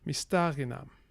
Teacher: Note that the stress here is on the antepenultimate syllable, sta.